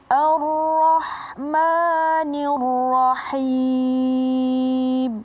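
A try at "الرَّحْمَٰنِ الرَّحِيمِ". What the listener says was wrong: Oh iya, itu sudah betul bacanya. Cuman a-nya jangan ikut-ikutan tafkhim. Jadi itu yang disebut dengan i'ta'u kulli harfin haqqah wa mustahaqqah. Setiap huruf dia mempunyai hak dan kewajiban. Jadi kalau a ini kan tidak harus tebal, tafkhim. Jadi ra-nya yang tafkhim.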